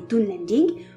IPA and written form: dunlending (Dunlending)